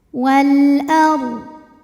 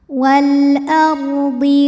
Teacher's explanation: Huruf ra dibunyikan secara tafkhim sebab ra sukun didahului baris fathah, maka kita bunyikan dengan tebal ra-nya. Wal ardi wa ma dihukumi dengan mad tabi'i zahiri sebab ada alif didahului baris fathah, maka mim ini panjang 2 harokat.